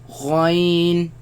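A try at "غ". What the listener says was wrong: Again, the ya sound. Do not produce the nasal sound. Now, but where do they come from? They come from the top part of the throat, right? Where the root of the tongue raises against the uvula and produce the sound.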